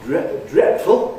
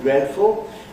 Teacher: They say /ˋdretfl̩/ instead of /ˋdredfl̩/ <dreadful>.